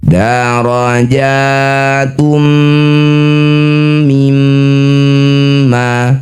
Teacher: Masukkan bunyi dumah tanwin pada mim. Bibir rapat dengung dua harakat. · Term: idgham bighunah, idgham bi gunnah